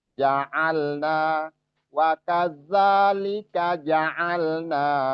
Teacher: hati-hati jim jangan sampai za'alna jadi malah lari ke zai